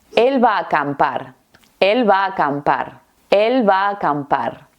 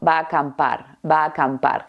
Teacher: lo natural es combinar estas tres vocales en una sola A. Y aunque sea un poquitito más alargada o extendida, es una a un poquito más larga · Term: fusión de vocales